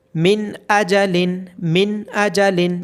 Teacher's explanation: نون ساکن کی آواز کو ہم بالکل ظاہر کر پڑھیں گے۔ من اجلن، من اجلن، جیسے بالکل سمپل پڑھا جاتا ہے، اس کو بالکل اسی طرح پڑھا جائے گا۔ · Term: اظہار